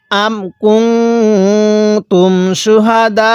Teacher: এই দালের মধ্যে কিন্তু আমরা 4 আলিফ টান দিব